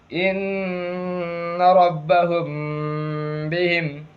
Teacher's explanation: میم ساکن کے بعد با، اس لیے غنہ کے ساتھ اخفا ہوگا اور اس کو بھی ایک الف کے برابر کھینچیں گے